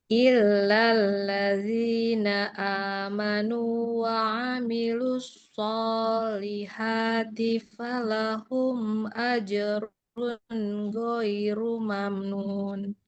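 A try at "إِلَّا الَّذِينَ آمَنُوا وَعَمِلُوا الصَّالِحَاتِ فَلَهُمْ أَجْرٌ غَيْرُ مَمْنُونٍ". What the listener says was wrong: Bagus. Yang ini malah panjang pendeknya bagus.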